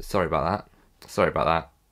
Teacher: You drop the A in about, so you would say, sorry about that. And notice how I have the glottal stop at the end of the word that